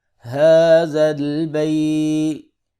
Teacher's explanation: ہا کھڑی زبر ہے، ایک الف کے برابر کھڑی زبر کو لمبا کریں گے۔